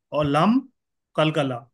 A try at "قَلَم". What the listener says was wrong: لم بغیر خلخلا ہوں گا، میم میں خلخلا نہیں ہوگا.